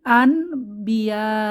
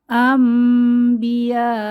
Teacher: আমরা নুন সাকিনের পরে বা পাচ্ছি তো আমরা গুন্নাহ সহ পরিবর্তন করে পড়বো